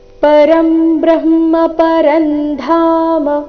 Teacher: ಧ ಮಹಾಪ್ರಾಣ ದೀರ್ಘ ಬರಬೇಕು